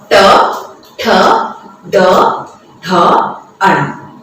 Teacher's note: जब हम ट बोलते हैं तब किस तरह से हमारी जीभ पलटी मारती हुई मूर्धा को स्पर्श करती हुई उच्चारित होती है।